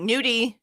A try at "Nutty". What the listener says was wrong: Nudie. There's a T, not a D. It's not nudie. Like